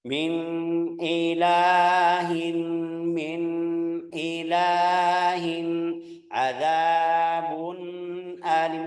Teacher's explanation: harus ada gunnah, tapi kecil, jangan terlalu banyak sampai jadi satu harakat atau 2 harakat.